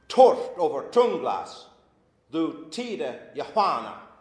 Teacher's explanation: Each half line has two stresses. Torft over tunglas, and they alliterate.